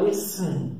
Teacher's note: Ele passa do S para o N.